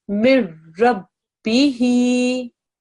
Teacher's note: the noon sakin essentially disappears